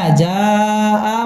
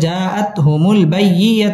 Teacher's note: মা জাআ মধ্যে মুত্তাসিল 4 আলিফ টেনে পড়তে হবে